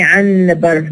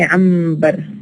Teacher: What we actually write is a and then noon, but what we actually produce is a and ma. So here we have the change from na alveolar to ma bilabial, because it is followed by bilabial sound. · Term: place assimilation